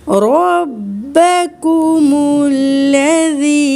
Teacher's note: رو موٹی پڑھیں گے کیونکہ رو کے اوپر زبر ہے